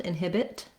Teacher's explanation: I may say that T at the end, inhibit, with a little release of air.